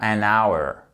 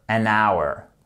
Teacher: C'est un de ces mots, il y en a assez peu, celui-ci sans doute le plus courant, pour lesquels le H n'est pas prononcé.